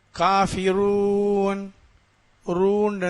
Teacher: ராவுக்கு பேச்சு இருக்குது இந்த ராவை வல்லினமாக அதாவது வாய் நிறைய உச்சரிக்க வேண்டும்